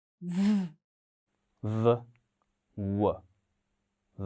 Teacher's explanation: aynan yuqori tishlar pastki labga tekganda hosil boʻlyapti. Mahraj deymiz.